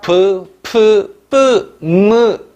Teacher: 양순이라는 건 두 량자를 쓰기 때문에 두 입술이 맞부딪히면서 나는 소리, 순음 또는 양순음이라고 합니다.